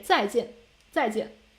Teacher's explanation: You make a fall tone contour and then back to your high tone and then make another falling tone. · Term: two fourth tones